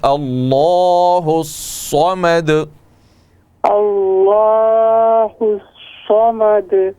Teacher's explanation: صاد حروف مستعلیہ میں سے اس کو موٹا کریں